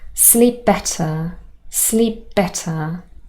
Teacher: the p was dropped so our first consonant at the end of the first word is dropped and instead we only use the our consonant from the second